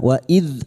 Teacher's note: dzal sukun hati-hati jangan dipantulkan bukan qalqalah